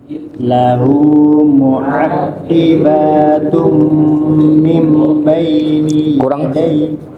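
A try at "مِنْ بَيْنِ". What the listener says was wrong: kurang ikhfanya. Mim gunai.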